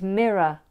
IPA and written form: ˈmɪrə (mirror)